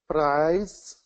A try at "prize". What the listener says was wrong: Okay, I'm hearing a little bit of a roll there, so try and control a little bit more, and that just means goes a little bit slower. Prize.